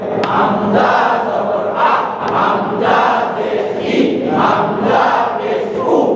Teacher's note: হামজা হলকের শুরু হতে শক্তভাবে আদায় করবে